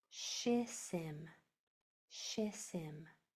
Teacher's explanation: Now when I put these two syllables together, these two S's are going to combine into one sound